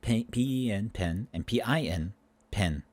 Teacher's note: these two vowels in certain words are joining together. They're becoming indistinguishable.